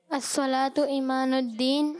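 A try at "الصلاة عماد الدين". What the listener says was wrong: ईमान बोल रहे हैं आप लोग, ठीक है। और ये है अस्सलातु, आइन है, क्या है तफसीर? हाँ, अस्सलातु इमादुद्दीन, ठीक है, आइन आएगा, ठीक है, ईमानुद्दीन नहीं, अस्सलातु इमादुद्दीन, ठीक है, आइन भी है।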